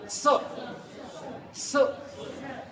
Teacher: जीभ ऊपर को दांत की जड़ में लगा के बोला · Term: दंत वाला सा